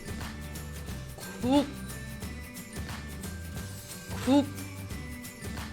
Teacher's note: come out and so because of that this G consonant is you can't even hear it at all it doesn't even sound like a g whatsoever